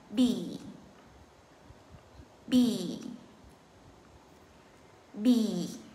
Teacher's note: Rồi, cẩn thận. B này là không có bật hơi. Hai môi chúng ta bậm lại, không bật hơi thì sẽ nói được cái chữ cái B này. Và cái chữ cái B này, cái âm I là âm I dài và căng, nên thành ra chúng ta mỉm cười nhẹ một chút xíu để cho nó ra cái chữ B cho nó đẹp ha.